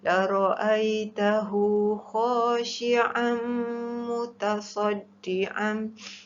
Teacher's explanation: La ra'aitahu mad silah qasirah, dibaca dua harakat. · Khashi'an mutasaddian mesti didengungkan. Tanwin bertemu mim, hukumnya adalah idgham ma'al gunnah.